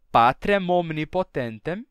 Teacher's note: estão pronunciando o m do final das palavras e estão conectando esse m com a palavra seguinte dizendo PAT omnipotentem em vez de deixar esse M mudo e